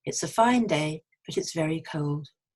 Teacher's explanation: we don't say a we'd have a little schwa